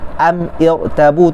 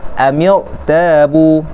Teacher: Yang ini pertemuan dua huruf yang sukun. Maka caranya ialah membariskan huruf yang pertama daripada dua huruf yang sukun itu. Maka selalunya dibariskan dengan baris kasrah.